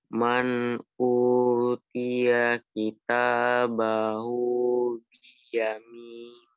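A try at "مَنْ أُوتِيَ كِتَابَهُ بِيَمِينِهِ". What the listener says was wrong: Iya, man biyaminih ya, tidak dibaca dengan mat.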